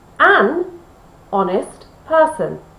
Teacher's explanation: Honest is spelt with an H, but we don't pronounce the H. So it's an O sound. An O, O, is a vowel.